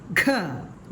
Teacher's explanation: ഹ, ഗ പ്ലസ് ഹ സമം ഘ. ഘ, ഗായുടെ കൂടെ ഒരു ഹായുടെ ശബ്ദം കൂടെ ഉച്ചരിച്ചു കൊണ്ടാവണം ഈ ഒരു അക്ഷരം പറയേണ്ടത്.